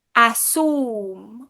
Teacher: Sometimes people say /asum/ because maybe they don't have a /iu/ /iu/ sound. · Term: sound substitution